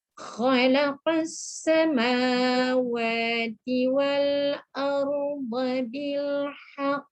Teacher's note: Ya, ini qalqalah akbar. Kita berhenti agak lewat sikit, gantungkan sikit ni baru kita lepaskan bunyi huruf qaf ni ya.